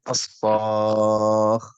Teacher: هنا بعد حرف المد الألف جاء سكون أصلي وهو الخاء، فالخاء هنا مشددة، والحرف المشدد عبارة عن حرفين، الأول ساكن والثاني متحرك، فإذا بعد حرف المد جاء سكون طام. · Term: مد لازم كلمي